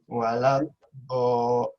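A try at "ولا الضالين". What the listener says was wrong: Masih kurang tebel kayaknya maksudnya. Walau do Tadi ngerasa nggak itu apa lidahnya kanan kirinya nyentuh? Kalau terasa sakit baru.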